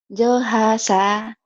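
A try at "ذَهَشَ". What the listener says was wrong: Zo, bukan jo ya. Zo. Zohasya. Zohasya. Zohasya.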